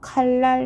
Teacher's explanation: 비음 니은이 유음 리을로 바뀌는 현상을 우리는 유음화 합니다